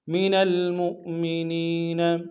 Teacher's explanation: حمزہ بشکل واو ہے، جھٹکا دیں گے